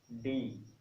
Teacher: हमारी जो टंग है यानी कि जीभ है वो मुड़ती है और ऊपर वाले तालू से सटती है